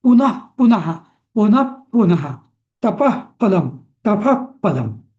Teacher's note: जसं पुन्हा पुन्हा, तर तिथे विसर्ग हा आपल्याला फ ने रिप्लेस करायचा आहे. जेव्हा प फ ब म्हणजे असं येतं ना विसर्गाच्या आधी, तेव्हा तो विसर्गाचा फ होतो, अर्धा फ. त्याला म्हणतात उपध्मानीय.